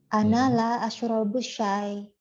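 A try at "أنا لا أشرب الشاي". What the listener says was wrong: Ahsan.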